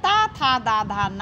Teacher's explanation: ता वर्ग जिसका उच्चारण स्थान दंत है या दात है जिसमें त था द धा न आते हैं